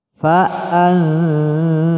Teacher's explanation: Namun untuk lebih mudahnya dalam praktek membaca ikhfa itu kita masukkan saja suara nun mati pada za